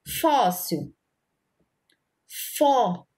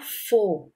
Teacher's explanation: quando a letrinha recebe o acento agudo, o som da sílaba vai ficar um som aberto. Fóssil, fó, porque recebeu o acento agudo.